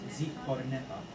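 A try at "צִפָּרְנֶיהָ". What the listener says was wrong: So when do you pronounce the yod? The yod is never silent, right? So how would you pronounce it if you pronounce the word, the yod? Nay. Right, because it can't be. Just because it doesn't have a zayt ray under it, that yod has to be pronounced. It's not a silent letter.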